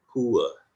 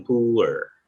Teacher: Contohnya kalau ini gaya UK, misalnya miskin, poor, tapi R-nya nggak bunyi ya.